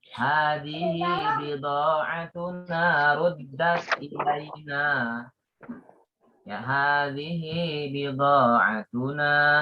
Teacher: Nah, hi-nya dibaca 2 harokat. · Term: mat silah sughra